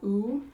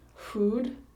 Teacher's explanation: the lips are more forward and rounded than English so we would have ooh like food ooh push your lips